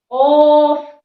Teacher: زبان کی جڑ اور تالو کے نرم حصے سے قاف ادا ہوتا ہے۔ اس کو پڑھیں گے تو تھوڑا کھینچ کر پڑھیں گے، قاف۔